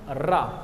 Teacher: रा जो होता है आपका प्रकंपित होता है। जब आप रा को बोलेंगे ना तो एकदम झंझनाहट सी होती है।